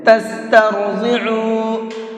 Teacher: را کو بھی اور ضاد کو بھی دونوں لفظوں کو پر کر کے پڑھیں گے، منہ بھر کے پڑھیں گے